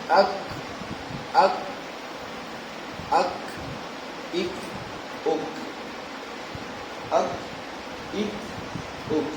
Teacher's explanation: زبان کا درمیان تھوڑا سا درمیان، یہ جب اوپر کے تالو سے لگتا ہے تو اسے کاف ادا ہوتے، کیسے اک اک اک اک اک اک اک اک، ٹھیک، اس سے کاف ادا ہوتا ہے۔